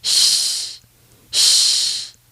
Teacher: The only real difference is that your tongue never actually touches the roof of your mouth to make that short explosion of air. This sounds more like air escaping than air exploding. If you're doing it properly, it should sound like sh, like a light SH sound in English.